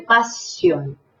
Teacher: Esta S, doble S, también tiene que arrastrarse, tiene que ser muy sibilante.